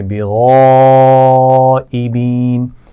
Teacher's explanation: غین کو موٹا پڑھیں گے اور اس کے بعد آپ دیکھ رہے ہیں بڑی مد ہے تو ہم کھینچیں گے